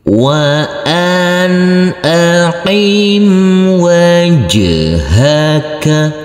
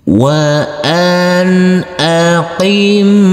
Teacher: nanti setelah huruf nun sukun ini ada huruf alif dibaca izhar Jadi huruf nun sukunnya ini huruf nun dibaca terang atau jelas